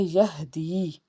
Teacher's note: یا ساکن سے پیچھے زیر ایک الف کے برابر کھینچ کے ادا کریں گے